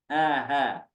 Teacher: Kemudian pada pangkal tenggorokan atau pangkal pita suara keluar huruf hamzah dan ha.